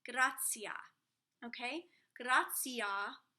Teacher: when you have a t in between two vowels it's an s it's a ts sound